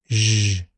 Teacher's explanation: It's made by positioning the tongue close to the roof of the mouth behind the alveolar ridge and squeezing air past it. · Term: palatoalveolar fricative